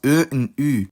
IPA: ø and y